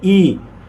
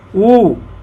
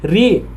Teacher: समृत जिन स्वरों के उच्चारण में मुख सबसे कम खुलता है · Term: समृत स्वर